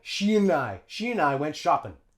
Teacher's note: And we'll drop the D and link it onto the I. · And notice how in shopping, we drop the G.